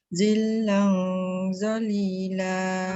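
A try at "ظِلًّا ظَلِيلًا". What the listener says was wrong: Hujung lidah mesti keluar. Masa sebut Allah tu mesti keluar. Baru dia tak ada desiran.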